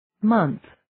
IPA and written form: mənθ (Month)